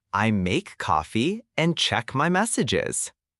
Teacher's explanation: In I make coffee, put a little stress on coffee.